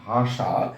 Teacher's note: মূর্ধন্য স এর উচ্চারণটা হয় তালবস্যর মতো